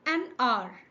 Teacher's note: H is silent, so the word begins with a vowel sound.